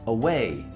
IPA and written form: əˈweɪ (away)